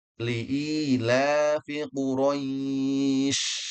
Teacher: Huruf shin dia dari segi sifat punya sifat yang sering kita ulang namanya tafashi. Tafashi artinya menyebar.